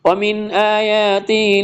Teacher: اظہار و نون ساکن کے بعد حروف ہلکی میں سے حمزہ آ رہا ہے